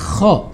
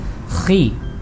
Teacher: kalau kho di kasroh maka pengucapannya tetap khi ya, ada ngoroknya ya, seperti ada getarannya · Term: makhorijul huruf kho